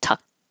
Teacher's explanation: This is an ED that sounds like a T because the final sound in the word before you added the ED was tuck, k, was voiceless. K, so it sounds like a voiceless T, tucked.